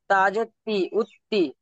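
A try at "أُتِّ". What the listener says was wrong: জি, মাশাল্লাহ, বুঝে এসছে ঠিক এইভাবে।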